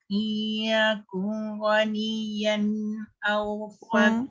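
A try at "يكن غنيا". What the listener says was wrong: Dia masih terifak tu. Kun. Kun. Dia cepat sangat. Dia tak boleh cepat. Dia mesti izhar ni sebenarnya susah tau bagi saya sebabnya nak meletakkan secara tepat tu macam mana Kalau dengung senang. Izhar ni kena sebut terang jelas dan nyata.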